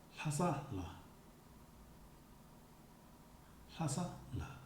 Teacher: the last word before the la particle is stressed. Then the la is pronounced in a low intonation, a little bit like if you were reaching your destination and relaxing.